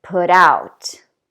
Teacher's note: notice also that the second word starts with a vowel sound so we're gonna link these two words together